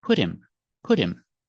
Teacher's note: we see the H is silent